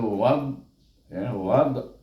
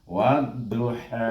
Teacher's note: yang kita kena bacakan waw ini diidghamkan dengan huruf dha. Dha. · apabila menyebut huruf dha itu terangkat kita lidah kita. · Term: huruf isti'la